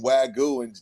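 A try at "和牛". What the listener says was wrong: It's Wagyu, not Wagyu. Not the Y is not pronounced.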